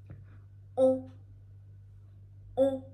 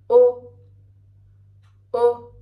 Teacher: C'est un son qui doit passer en même temps par la bouche et le nez. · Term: voyelle nasale